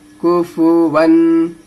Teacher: काफ पेश कु, फा पेश फु, कुफु, वाव अलिफ दो जबर वन है, कुफु वन। तनवीन के बाद अगर अलिफ आता है तो वो नहीं पढ़ाता है, लेकिन नून की आवाज आती है